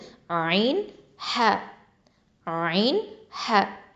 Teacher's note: அடுத்ததா தொண்டையின் நடுப்பகுதியிலிருந்து ஒலிக்கக்கூடிய எழுத்துக்கள் அதாவது இத அரபிக்ல வசத்தல் ஹல்க் அப்படின்னு சொல்லுவோம் வசத்தல் ஹல்க் இது வந்து